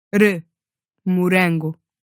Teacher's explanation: your tongue goes right up against your alveolar ridge where you make that D sound, d, and just touches there for an instant before allowing the air to move just over the tip of your tongue. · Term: tapped R